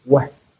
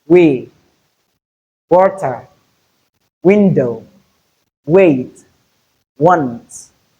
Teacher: voiced bilabial semivowel, which is articulated as w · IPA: /w/